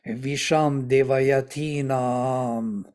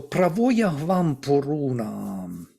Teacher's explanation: we lengthen the puru naam. I make naam as a double syllable.